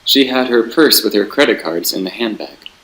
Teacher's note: And then another example of clause terminal here, you have handbag. The clause terminal falls on the first syllable of the word handbag.